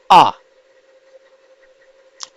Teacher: विवृत है और मुख खुला है